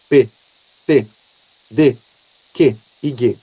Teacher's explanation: O ar fica preso e depois ele é solto com força. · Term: oclusivas